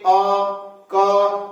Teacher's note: आपको लगेगा की जो आवाज आ रही है वो कंठ से आ रही है